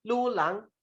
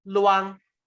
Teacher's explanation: A slurred form of lulang. So instead of say lulang, 2 syllable, it is slurred and it becomes luang as a single one, single syllable